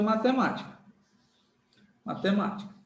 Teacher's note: Ou seja a anti penúltima sílaba é forte